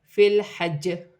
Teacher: وقف کی صورت میں زیر گر جائے گی اور جیم ساکن ہو جائے گی. وقف کی صورت میں جیم میں قلقلہ پیدا ہوگا کیونکہ جیم حرف قلقلہ میں سے ہے